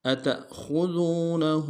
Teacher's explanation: تا کو حمزہ کے سامنے لانا، جھٹکا دیں گے